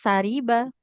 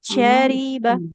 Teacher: kedua huruf shinnya jangan jadi sa, ya jangan sariba.